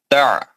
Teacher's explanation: عین حروف حلقی ہے وسطی حلق سے پڑھا جائے گا